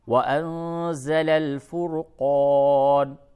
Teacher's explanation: آیت نمبر 4: من قبل ہدی للناس، نون مشدد ہے، غنہ کیجئے، للناس، وانزل الفرقان، نون ساکن کے بعد زا ہے، اخفا ہوگا، اور فرقان میں را کو پر کیجئے